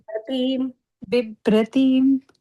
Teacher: बिभ्रतीं Yeah, here I don't know if Vibhratim is also allowed, but it is B. The first B is Alpa Prana, the second one is the Mahaprana.